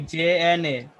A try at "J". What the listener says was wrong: Not J and A, but I would say something like pleasure, measure, treasure, the J sound in pleasure, that sound. J.